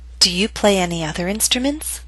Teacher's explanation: bouncing down a little bit and then Rising